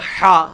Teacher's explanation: جو حلوائی والی ہا ہے وہ عربی میں ہا حلق سے نکلتی ہے